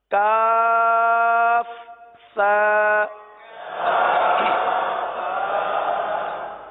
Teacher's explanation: زبان کا سرا اور اوپر کے دانتوں کے اندرونی کنارے، یہاں سے سا ادا ہوتا ہے